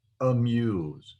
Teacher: the word amuse now i have shortened when i pronounced muse i shortened the a sound where it almost sounds like a u sound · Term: hurried vowel